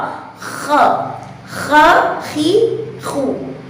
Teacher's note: terdapat pangkal lidah yang naik ke atas langit-langit sehingga menghasilkan suara yang tebal